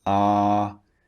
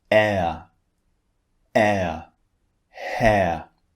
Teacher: one of the differences between these two sounds as i said the first one is long ah and the second one is actually two vowels squeezed together that's why we change the shape of our mouth when we